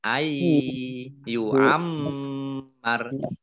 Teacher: Mim tasdid dibaca mendengung atau gunnah, ditahan kurang lebih 2 harokat.